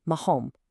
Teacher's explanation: Here that double R also triggers that deep guttural throat sound